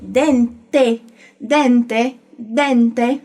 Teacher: o final, com o T e o E, sendo sempre bem pronunciado, nada de apagamentos